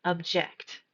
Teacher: The second pronunciation stresses the second part of the word object.